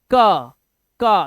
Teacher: इसी तरह से अगर मैं का बोलना है का, तो आपने देखा होगा आपकी जो टंग है वो आपके अपर जॉ से टकराती है, का तो आपकी टंग जो है थोड़ी मुड़ती है और ऊपर जाके तालुका से टकराती है तो का बन जाता है। तो यहां पर देखा वोकल कॉर्ड का काम हो रहा है।